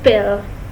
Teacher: Pa is a bilabial stop, as labia means lips, so Pa is a sound made by lip. The way of articulation is in such a way that lips are brought together, the air stream is stopped and then released with an explosion, so Pa is a stop or so-called plosives.